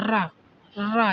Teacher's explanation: जिन व्यंजन वर्ण का उच्चारण करते समय वायु जीभ के ऊपर से लुढ़कती हुई बाहर निकलती है उसे लुंठित या प्रकंपित व्यंजन।